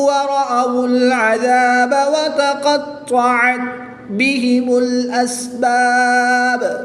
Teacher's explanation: قاف حروف مستعلیہ میں سے ہے، طا حروف مستعلیہ میں سے بھی ہے اور حروف قلقلہ میں سے بھی ہے، اس کو پر بھی پڑھیں گے اور اس پہ قلقلہ بھی خوب جماؤں کے ساتھ کریں گے۔ وقف کی حالت میں با کے اوپر جو پیش ہے یہ ساکن کر دیں گے، اور جب حروف قلقلہ ساکن ہو جائیں گے تو ان کو خوب ظاہر کر کے پڑھیں گے۔